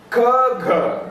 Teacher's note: the air is blocked near the velar and air is immediately released. These are plosive sounds.